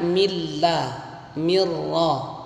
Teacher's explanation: nun sukun atau tanwin bertemu dengan lam dan ra, cara membacanya dimasukkan tanpa mendengung ya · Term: idgham bila gunnah